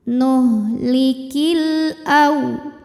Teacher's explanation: sebab ada alif lam yang menghadapi huruf qamariah yaitu huruf hamzah cara membacanya lam dibaca dengan jelas atau disebut dengan izhar qamari